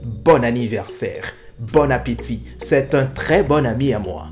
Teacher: vous devez mettre l'accent sur le O pas sur le N pour ne pas dire bonne